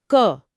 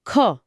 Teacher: ख बोलते समय हाथ पर सच में हवा का एक तेज झोंका महसूस होता है · जिनमें ज्यादा हवा झटके से निकलती है, वह महाप्राण होते हैं